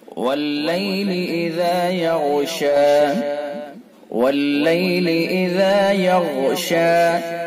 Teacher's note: غین کو پر کر کے پڑھیں گے اور ذال کو اسے نرمی کے ساتھ پڑھیں گے